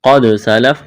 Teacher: الا ما قد سلف، الا لام میں سختی کریں گے، الف مدہ ہے، ما الف مدہ ہے، قد سلف، قاف کو موٹا کرنا ہے، دال پر قلقلہ کریں گے، وقف کریں گے، فا کو ساکن کریں گے۔